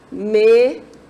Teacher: Eu vou dizer que ela é esdrújula, porque a sílaba tônica dela é a antepenúltima